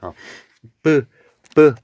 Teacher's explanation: 소리 내는 방법에 따라서 자음을 여러 가지로 해볼 수가 있는데 뿌 이렇게 공기의 흐름을 막았다가 터트리면서 내는 소리를 우리는 파열음이라고 불러요.